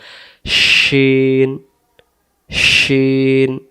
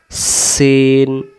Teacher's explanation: নাই তাহলে সিন অক্ষরের উপরে তিনটি নুক্তা থাকলে তার নাম শিন শিন জিহ্বাটার মাঝখান থেকে ভেসে আসবে